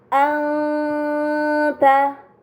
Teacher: nun sukun bertemu dengan huruf Ta ini dinamakan ikhfa Hakiki maka nun sukun harus dibaca secara samar dengan gunah yang dipanjangkan